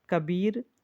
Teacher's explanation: तो कबीर में बा में बलाघात का प्रयोग किया गया है।